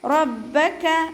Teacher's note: റ ഫതഹ ആയതുകൊണ്ട് നമ്മൾ ഉയർത്തിയിട്ട് ഉച്ചരിക്കും. ബാക്ക് ശബ്ദം വന്നിട്ടുണ്ട്, അപ്പോൾ 2 ഹർഫുകൾ ഉച്ചരിക്കുന്ന കനം കൊടുക്കുക.